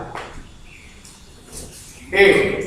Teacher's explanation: अच्छा ये कैसे बनता है, ए बोलो, ए कैसे बना, आ और ई दोनों मिला क्या हो गया ए। तो आ का उच्चारण स्थान क्या था, इधर देखो, और ई का इधर देखो तालु। · आ का कंठ था, ई का तालु था, तो ए का क्या हो गया, कंठ और तालु